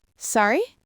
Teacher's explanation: Sorry? With a rising tone means please repeat that. The tone makes the meaning completely different.